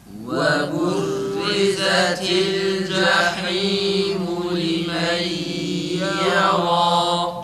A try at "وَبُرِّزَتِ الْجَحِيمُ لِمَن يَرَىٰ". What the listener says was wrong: cezimli lamlarda acele etmeyelim arkadaşlar. Lam tam çıksın, evet, ses tonu olgun olsun tekrar